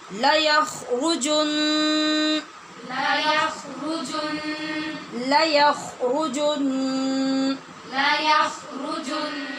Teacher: غنہ کر کے ہی ہم وقف کریں گے، لیکن غنہ نرمی سے نہیں کریں گے، شدت سے ہوگا